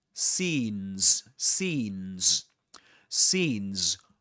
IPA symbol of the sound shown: iː